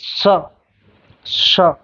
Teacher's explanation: वर्तस्य का स्थान दांत और मसूड़े के से मिला के बोला जाता है